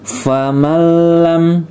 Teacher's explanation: Faman lam, nunnya tidak dibaca, masuk huruf lam, idgham bila gunnah ya.